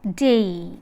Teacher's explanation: The lips are unrounded for both the elements. When you articulate day, lips are unrounded. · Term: diphthong